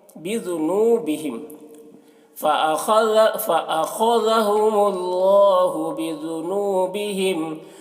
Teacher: خا کو پر پڑھیں گے، خا حروف مستعلیہ میں سے ہے، ذال کو باریک پڑھیں گے